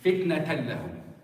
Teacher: There is no noon, there is no ghunna at all. · In the lam and the ra, you're merging the noon or the tanween with the lam or the ra, and there is not even a ghunna. The noon is almost completely gone. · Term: hukm al-idgham